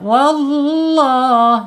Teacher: Wallah, tebalkan lidah lamnya. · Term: lam jalalah